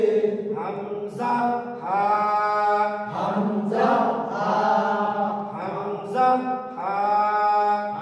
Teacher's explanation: 1 নম্বর মাখরাজ, হলকের শুরু হইতে